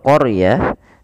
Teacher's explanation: di situ huruf ro-nya ditebalkan. Karena huruf ra yang didahului dengan huruf fathah, maka dia kita namakan dengan ra tafkhim, harus tebal.